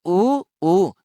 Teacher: अब देखो अगर उ को बोलोगे उ को ओष्ठ के आधार पर उ को बोलने में लघु उ बोले या दीर्घ ऊ बोले लगभग गोल हो जाते हैं उ ऊ लगभग ओष्ठ गोल हो जाते हैं आगे से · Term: वर्तमुखी स्वर